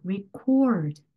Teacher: 기록이라는 명사 단어는 record 부분에 강세가 더 강하게 가야 되고요. 녹음하다는 이런 식으로 record 이렇게 cord 부분에 강세가 가야 되는구나